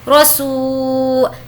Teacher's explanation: یہاں پر واو مدہ ہونے کی وجہ سے ہم کھینچ رہے ہیں